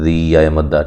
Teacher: من الذین، لام کو موٹا نہیں کرنا، لمبا نہیں کرنا، ذی یا مدہ ہے، ذال کو نرم ادا کرنا ہے، ذی یا مدہ، ٹھیک ہے، 1 الف کی مقدار کے برابر لمبا کریں گے